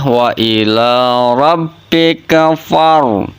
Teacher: Maka bunyinya seperti ini, wa ila rabbika far. Nah, fa-nya nggak panjang, langsung masuk ke huruf ro